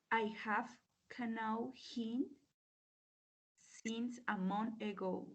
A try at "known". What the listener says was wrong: Y la pronunciación, es known, no known. I have known. Esa K no se pronuncia.